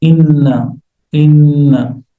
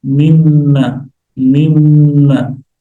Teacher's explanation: So, you are making the ghunnah clearer. You intensify the ghunnah. You double the ghunnah. Why? Because this is two noons. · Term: noon mushaddadah